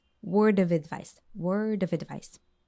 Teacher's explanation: the sound F changes into V and everything just links together · into V and everything just links together word of a device this D sound from word links into off and off is linked to the vowel sound advice